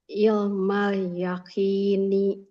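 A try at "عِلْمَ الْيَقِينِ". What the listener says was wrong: Ee ilnya kurang alir.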